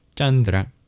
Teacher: That C actually indicates a palatal plosive, cha, not unlike the diagram CH in English.